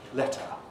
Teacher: we lost the er coloration again giving us letter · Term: r-colored schwa